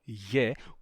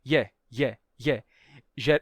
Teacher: se o gama for fricativo, ou seja, não mais ga, e sim ra, e aí em contato com uma vogal palatal, ele se palataliza também, e aqui não teríamos ré, e sim ye, com a palatalização ye, como acontece no grego atual, curiosamente.